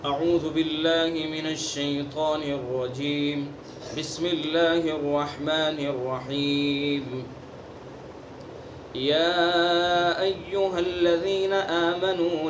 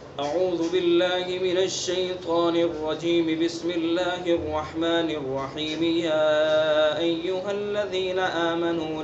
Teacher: اعوذ باللہ من الشیطان الرجیم کے اوپر بھی وقف، اور بسم اللہ الرحمن الرحیم کے رحیم پر بھی وقف، اور پھر صورت کو دوسرے سانس میں شروع کیا جائے، یہ فصل کل ہے